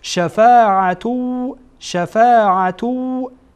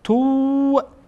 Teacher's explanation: وقتی این‌ها را با هم وصل بکنیم شفاعتو شفاعتو این تنوین بعد از تنوین چی آمده وا آمده و واو از کدام حروفه از حروف ادغامه ادغام میشه